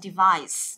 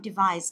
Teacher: trọng âm của nó sẽ giữ âm tiết thứ hai nhá. Chúng ta sẽ nhấn vào cái âm thứ hai và chúng ta sẽ đọc là device.